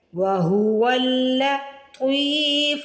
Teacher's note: طا کو موٹا بھی پڑھنا ہے، طا کو کھینچ کے بھی ادا کرنا ہے۔ زیر کے بعد یا ساکن آ رہی ہے، اسے کہتے ہیں یا مدہ، یعنی طا کے بعد یا مدہ آ رہی ہے تو ہم طا کو کھینچ کے ادا کریں گے۔ · واو کو لام سے ملانا ہے، لام پہ تشدید آ رہی ہے۔ وَهُوَ اللطیف، طا کو موٹا بھی پڑھنا ہے، طا کو کھینچ کے بھی ادا کرنا ہے۔